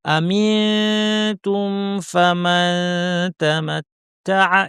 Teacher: ইখফা মানে হচ্ছে তায়ের মাখরাজের কাছাকাছি জিহ্বাকে নিয়ে আমি রেডি করব কিন্তু লাগাবো না, নাক থেকে গুণনা করব।